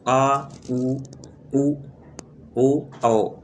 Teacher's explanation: जिन स्वरों के उच्चारण में जिह्वा का पिछला भाग उत्थापित होता है उन्हें पश्च स्वर कहते हैं